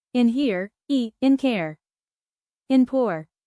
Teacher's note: centering diphthongs, which glide toward the schwa sound